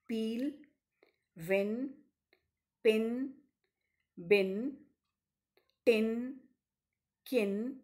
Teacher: the soft palate is raised thereby shutting off the nasal passage of air thus the lung air is blocked in the mouth when the oral closure is released the air escapes with a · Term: plosives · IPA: /p,b/